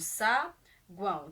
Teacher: Saguão, a gente divide saguão. Temos o U, que é uma semivogal, o A aqui com o som de an nasalizado, né? Que é uma vogal, e o O, que é uma semivogal. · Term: tritongo